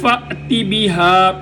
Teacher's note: من المشرق، قاف موٹا، من المشرق فأت بها، یہاں پر بھی جھٹکا ہوگا کیونکہ حمزہ ساکن ہے